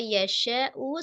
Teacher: syin bertemu dengan Hamzah di dalam satu kata yasyau satu kata maka menjadi mad wajib muttasil panjangnya 4 sampai 5 harakat